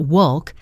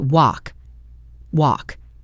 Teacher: The L is completely silent. It's not wolk, it's just walk.